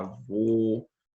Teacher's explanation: então a gente chama de timbre fechada é com a boca meio fechada